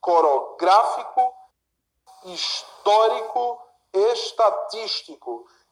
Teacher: antepenúltima sílaba é a mais forte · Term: proparoxítonas